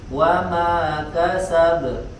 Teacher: Di ayat kedua tidak ada tasydid, berarti tidak boleh ditahan dulu, langsung dipantulkan. Kasab ya, wa ma kasab, berbeda dengan di ayat pertama tadi, lahabin wa tab, ditahan dulu. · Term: qalqalahnya langsung